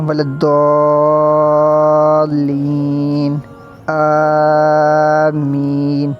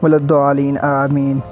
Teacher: دونوں بڑی مد ہیں، تو ان کو 5 الف تک ہم نے لمبا کرنا ہوتا ہے